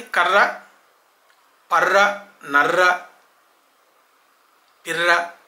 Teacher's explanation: కర్ర పర్ర నర్ర పిర్ర అన్నప్పుడు రా లో ట్రిల్ ఉంది